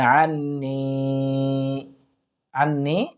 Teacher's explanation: আন ওয়াজিব গুন্না আমরা এক আলিফ পরিমাণ টেনে করার চেষ্টা করব।